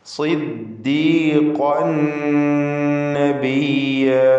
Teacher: സ്വാദിന് കസ്റുള്ളത് കൊണ്ട് കുറഞ്ഞ തഫ്ഖീം കൊടുക്കുക. · ഖാഫ് ഇസ്തിഅലാഇൻ്റെ ഹർഫാണ്, പൂർണ്ണമായ തഫ്ഖീം. ഖാഫിൻ്റെ തൻവീനിനെ ശേഷമുള്ള നൂനിൽ പൂർണ്ണമായും ലയിപ്പിച്ച് മണിക്കണം. ഇദ്ഗാം ബിഗുന്ന കാമിൽ.